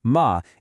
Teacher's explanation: the fourth ma is just a sharp drop.